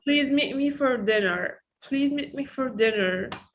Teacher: be careful about me here because it's a function word and we don't stress on that.